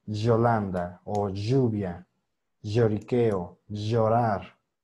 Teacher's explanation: tenemos que sumar dos sonidos el de la zeta más el de la y